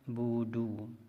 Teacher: Huruf ain sukun ini kadang-kadang bunyinya terpisah atau putus dengan huruf ba. Budu, seperti ada saktah di atas huruf ain.